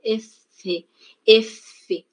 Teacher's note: Va a haber pues una obstrucción de forma parcial y luego sale de forma continua. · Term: fricativas